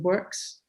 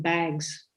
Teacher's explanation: So this fricative is pronounced as voiceless when the preceding consonant is voiceless, as in works, for example. And it's pronounced as the voiced variant Z when it follows a voiced consonant, as in bags